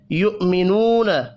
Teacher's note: حمزہ پڑھیں گے، واو نہیں پڑھنا۔ نو، واو مدہ ہے، 1 الف کے برابر کھینچ کر پڑھیں گے۔